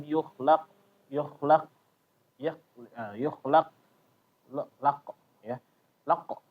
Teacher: kesalahannya adalah ketika membacanya dia menambahkan angin ya. Jadi kayak tambahan angin. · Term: kesalahan qalqalah